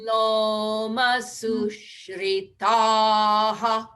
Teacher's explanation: That's a long ah there.